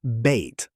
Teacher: Say bait slowly and you'll feel your tongue creep upward toward an abai as the word finishes.